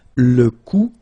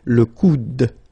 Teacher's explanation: you don't insist on this final e, it only gives you the sound of d at the end